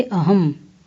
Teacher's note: अनुस्वार, इसका उच्चारण नासिका भाग से होता है। यह सदा स्वर के बाद आता है, जैसे अहम।